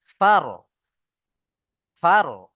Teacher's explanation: এখানে দেখেন রয়ের উপরে সাকিন, তাই না? আর র সাকিনের ডান দিকে জাবার এসছে, তাই র সাকিনকে পুর করে পড়তে হবে